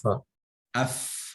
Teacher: huruf fa ini memiliki sifat hamas, mendesis.